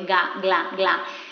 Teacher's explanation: la G va delante de una L y tenemos este sonido velar sonoro de ga, gla, gla.